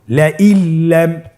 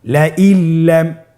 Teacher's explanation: নুন সাকিনকে আমাদেরকে পরবর্তী হরফের সাথে মিলিয়ে গুণা ছাড়া পড়তে হবে।